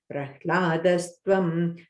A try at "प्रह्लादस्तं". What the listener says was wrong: The last line, Prahladastam. Okay, not a Twam. Tam, yeah.